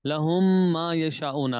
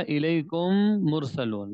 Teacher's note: میم ساکن کے بعد میم آئے تو میم کو دوسری میم سے ملا کر غنہ کریں گے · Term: ادغام